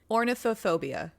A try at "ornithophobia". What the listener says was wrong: That middle section's not getting pronounced at all, though. there's like a Are we not pronouncing the middle part, the scaladia?